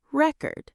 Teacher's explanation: As a noun, we stress the first syllable record. As a verb, we stress the second syllable. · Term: word stress